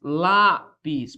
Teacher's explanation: Primeiro, porque ela é uma paroxítona. Lá, a sílaba tônica recai sobre a penúltima. E ela termina em IS, ó.